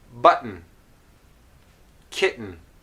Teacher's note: So you notice that the T is not releasing, and I'm going directly from T to N.